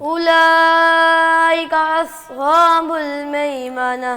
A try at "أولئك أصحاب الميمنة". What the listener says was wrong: اولائی، یہاں پہ حمزہ ہے، اس کو بھی واضح کرنا ہے. اولئک اصحاب المیمنہ. صاد کو موٹا کر کے پڑھو، سیٹی کی آواز بھی ہے.